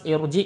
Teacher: Ini pada lafaz irji ini ee rnya dibaca tebal ya